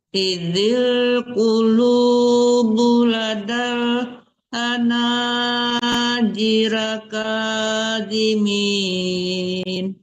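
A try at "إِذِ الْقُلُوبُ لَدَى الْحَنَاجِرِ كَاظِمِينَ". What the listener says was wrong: Diri, hati-hati melihat harakat, jangan dibaca jiro, diri, kawimin. Coba ulang lagi Bu.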